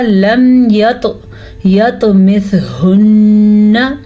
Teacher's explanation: طوا پہ قلقلہ ہو رہا ہے کیونکہ طوا حروف قلقلہ میں سے ہے